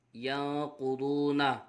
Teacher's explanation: یا نون زبر ین، قاف پیش قو، ینقو، ضاد واو پیش دو، ینقضو نون زبرنا، ینقضون نون ساکن کے بعد حروف اخفا میں سے قاف آ رہا ہے، اخفا ہوگا، غنہ کر کے پڑھیں